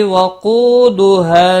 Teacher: قو واو مدہ ہے، ایک الف کے برابر کھینچ کر پڑھیں گے